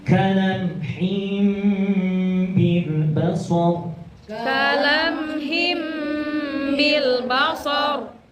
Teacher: Tanwin bertemu dengan ba. Iklab. Iklab. Itu dengung. Berubah jadi mim. Him. Kalamhim.